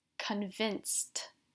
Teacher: Can you hear how I pronounce the ed like a t?